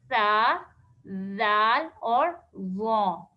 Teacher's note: زبان کی نوک جب اوپر والے سامنے کے جو 2 دانت ہیں ان سے لگے گی تو یہ 3 حرف ادا ہوں گے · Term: حروف لثویہ